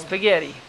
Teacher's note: Et le D, on l'entend à peine